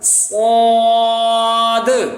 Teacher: लंबा भी करना है और दाल की वजह से यहाँ थोड़ा सा कलकला भी होगा